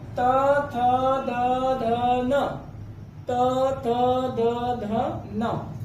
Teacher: इनका उच्चारण कहाँ से होता है, तो जिह्वा और दंत की सहायता से होता है, इसीलिए इन्हें क्या कहते हैं, दंत वर्ण कहा जाता है।